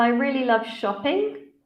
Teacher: the candidate has used a rising intonation on a statement yes very good everybody yeah it should be falling because it's